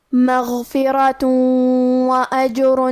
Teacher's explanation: کلمت مغفرہ میں حرف الراء کو ہمیں موٹی آواز میں پڑھنا ہے، آخری میں تا پہ تنوین پیش ہے، پھر حرف الواو ہے۔ کلمت واجرن میں واو حروف الادغام بغنہ میں سے ہے، تو ہمیں یہ حکم کو غنہ اور تشدید کے ساتھ ادا کرنا ہے۔